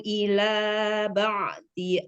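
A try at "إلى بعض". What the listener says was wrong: Kita perbaiki dotnya. Ila ba'dhi.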